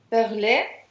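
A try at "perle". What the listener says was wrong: Только «э» на конце не читается, и получаем «перль». Да, здесь почему «перль», почему «э»? Здесь закрытый слог, отлично.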